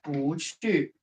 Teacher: Attention, here is 不 second tone, rising tone. It's not 不 OK?